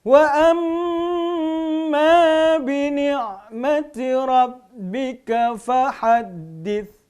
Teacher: ya mimnya bertasydid, gunnah lagi